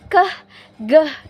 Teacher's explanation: itu udaranya itu dikeluarkan, dihembuskan keh, geh gitu. Ditekan dari dalam mulut kita. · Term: dorsovelar